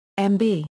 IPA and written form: mb (mb)